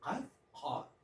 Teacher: the back of the tongue to the uvula we pronounce qaf, qa.